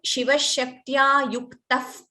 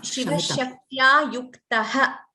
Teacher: So the Visarga is chanted completely.